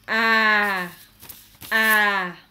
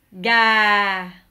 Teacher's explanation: Mais sauf que c'est un accent qui descend, donc vous faites ga. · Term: l'accent descendant